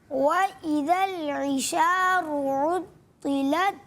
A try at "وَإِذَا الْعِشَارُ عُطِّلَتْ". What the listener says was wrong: اچھا طا کو اور زیادہ پر کریں تو اچھی بات ہے. کوشش کریں اور موٹا کریں طا کو.